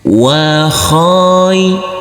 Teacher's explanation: huruf kha yang berfathah a ini bertemu dengan huruf ya sukun harus kita lembutkan karena ini adalah bacaan lin atau bacaan lain